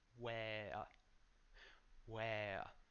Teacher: And then we have where. So make sure that the W sounds like a U. So where. Then there's an open A and a schwa.